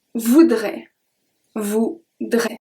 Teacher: Here, we have the T at the end that we do not pronounce.